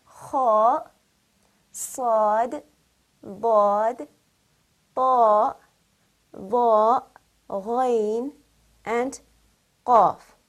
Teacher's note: Basically, simply put, the letters of isti'ala are the heavy letters of the Arabic alphabet. They are pronounced with a rounded mouth full of air to produce a heavy, full sound.